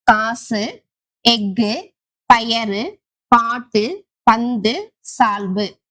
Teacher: வல்லின உகரங்கள் அதாவது குசுடு துபுரு சொல்லின் இறுதியில் வரும்போது ஒரு மாத்திரைக்கு பதில் அரை மாத்திரை அளவே ஒலிக்கும் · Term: குற்றியலுகரம்